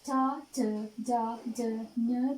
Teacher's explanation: චා, ච, ජා, ජ, ඤ කියන අක්ෂර කියවනකොට මේ දිවේ මැද කොටස තල්ලෙහි වදිනවා. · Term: තාලුජ අක්ෂර